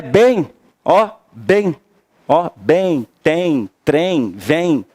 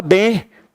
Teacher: nasalizar, fica bem. Aí você tem que ter o som do I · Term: ditongo